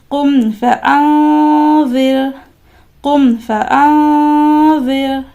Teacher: دی کہ اخفا کا غنہ کس طریقے سے ہوتا ہے، زبان کی کوئی حرکت نہیں ہوتی ہے، زبان نیچے ہی ہوتا ہے، اور آواز کو، نون ساکن کی آواز کو ناک میں 2 سیکنڈ کے لیے لے جانا ہوتا ہے